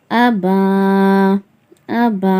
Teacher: அலிப் மேல ஏதாவது குறியீடுகள் இருந்தா அத ஹம்ஸான்னு தான் சொல்லணும் சொல்லிருந்தோமா வீடியோல அதனால ஹம்ஸா ஜபர் அ பா அலிப் ஜப பா அபா அபா ஜபர் அலிப் வந்துருக்கு அதனால அலிஃபை மத்தா ஒரு அலிபக்கு நிகரா நீட்டி வந்து நம்ம வந்து ஓதுறோம்